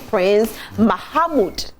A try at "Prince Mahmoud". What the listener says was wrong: Yeah, maybe just a little stress you added. Prince Mahmoud.